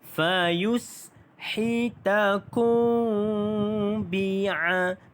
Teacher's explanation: Hukum mim mati bertemu dengan ba, maka hukum dia dibaca dengan dengung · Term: ikhfa syafawi